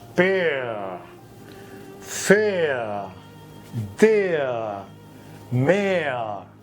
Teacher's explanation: এখানে আটা ওপেন নয়, ক্লোজড, চেপে আ করতে হবে। দেয়ার, পেয়ার, ফেয়ার, ই এবং আ সাউন্ডটা এরকম ভাবে লেখা হয়, ই প্লাস আ সাউন্ড। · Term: এয়ার সাউন্ড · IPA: /eə/